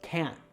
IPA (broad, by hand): kæn